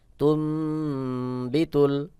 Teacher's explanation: নুন সাকিনের পরে বা আসছে বা ইকলাবের হরফ মিম দ্বারা বদলায় পড়তে হবে